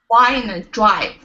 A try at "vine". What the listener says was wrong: And again, on that, we want your teeth to touch your lip for that first one.